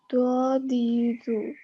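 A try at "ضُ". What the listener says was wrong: Ya, agak keluar anginnya itu kalau Ustadz bilang ya. PR kamu ya, di do-nya tolong diperbaiki ya.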